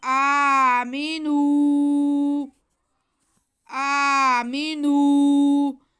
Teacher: نو کی آواز کو ناک میں نہیں جانے دینا · نون پہ پیش ہے اور واو ساکن ہے، اس لیے ہم نون کو کھینچیں گے کیونکہ اس کے ساتھ واو مدہ ہے